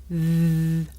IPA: ð